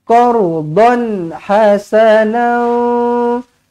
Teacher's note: Qardan, tanwin selari bertemu dengan ha. Idhar halqi, dibaca dengan jelas dan terang.